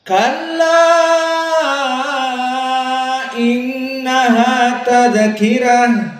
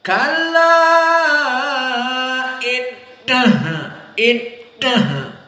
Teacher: Innaha, maka nun musyaddadah wujubul gunnah, maka dibaca dari khaisum, dari hidung, in di sini makhrajnya khaisum.